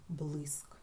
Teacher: А у слові блиск наголос падає на звук и І ми його чітко чуємо